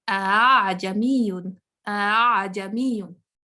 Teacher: ٹھیک ہے، اس کو تسہیل کے ساتھ، سہولت کے ساتھ جو ہے نا، اس کو شدت کے ساتھ نہیں پڑھنا. جو سیکنڈ حمزہ ہے اس کو درمیانی حالت میں لے کے آنا. تو یہ تھا حمزہ.